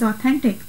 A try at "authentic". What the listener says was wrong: say authentic with a TH.